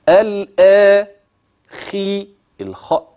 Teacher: والترقيق اللي في الكلمه الا خي الخا اوعت قول مرققه لا دي في ادنى مراتب التفخيم لانها مكسوره